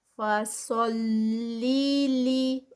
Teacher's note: فا جو ہے لائٹ ہے اور سا ہیوی ہے. فصلیلی اور پھر لام پھر لائٹ ہے آگے، تو صرف سعود کو ہیوی کرنا ہے، آگے پیچھے کے لیٹرز نہیں.